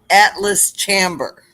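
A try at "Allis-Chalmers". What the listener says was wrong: No, not Atlas. ALLIS.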